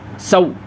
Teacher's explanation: دیکھیے یہاں پہ جو ہے واو پر سکون اس سے پہلے پیش ہے تو کھینچ کے پڑھیں گے، واو مدہ بنے گا یہ. اور واو پر سکون اس سے پہلے زبر اگر آئے تو واو لین ہے جلدی پڑھنا